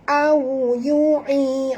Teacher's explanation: Waw sifatnya lin lembut, muncungkan mulut tuan-puan. Au yu'i, di sini ma asli, du di sini ma asli, kum mim mati bertemu fa, tak boleh dengung ya.